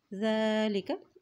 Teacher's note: زال کے پر کھڑی زبر ہے، اس کو ایک حرکت لمبا ادا کریں گے